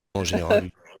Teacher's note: one of the things the French do when there's two vowels they do not put a glottal stop in between them.